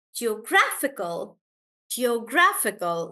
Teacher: in the word geographical the stress is on graph